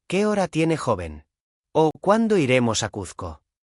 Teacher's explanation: La voz baja al final. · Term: inflexión final es descendente